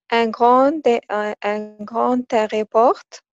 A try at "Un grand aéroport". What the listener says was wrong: Non, ne prononce pas le T. Un grand aéroport.